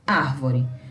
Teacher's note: Na palavra árvore, o ar que é a sílaba mais forte, portanto, a sílaba tônica